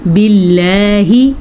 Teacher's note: اللہ کا نام باریک کیونکہ اللہ کے نام سے پہلے زیر ہے